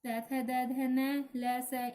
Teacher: इन्हें बोलते समय जीभ दांतों से स्पर्श करती है, तो ये दंतस्य व्यंजन कहलाते हैं